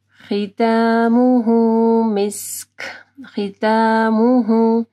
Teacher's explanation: ہاں کے اوپر پیش ہے، پھر دیکھیں چھوٹی سی واو ہے، مد صلہ سقرا ہے، چھوٹی مد ہے، یعنی ہاں کو ہم لوگ تھوڑا سا اسٹریچ کریں گے